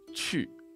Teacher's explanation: We've got the ch-ch sound, so our tip of our tongue is behind our bottom teeth. We've got the U sound as well.